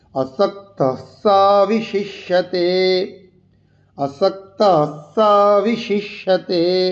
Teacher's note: আসক্ত বিসর্গ আছে, পরে স আছে, তাই ওই বিসর্গটাকে হসন্ত করে উচ্চারণ করতে হবে।